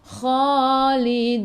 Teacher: Lidun, sebelum huruf akhir ada waw yang tak ada baris, ma'aril sukun, boleh baca 2, 4 atau 6 harakat. Matikan dengan huruf nun, hujung lidah menyentuh gusi atas